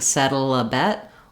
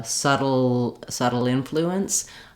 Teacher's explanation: I'm going to link that L and it'll transition from a dark L to a light L as I link to the next word